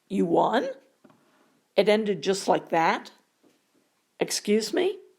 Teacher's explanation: Some interrogative sentences consist of a declarative statement posed as a question. In speech, they're indicated by a rising intonation, but in writing, we simply add a question mark at the end.